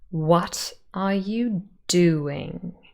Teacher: 5 syllables, and the first and fourth syllable are stressed. Sometimes it helps to hum the stress pattern so that you become a bit more familiar with it.